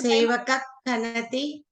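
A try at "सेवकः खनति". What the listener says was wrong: Sevaka. No. You have to pronounce either ardha visarga or sampurna visarga. So either sevaka khanati, which is akuha visarjaniyanam kantaha. So visargaha is the adesha for ka. Or it is jihvamuliyasya jihvamula, because the mula formation of the kantasthanani is jihvamula.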